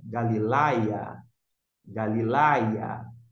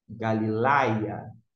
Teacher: Note a sílaba tônica no iota, que é o I.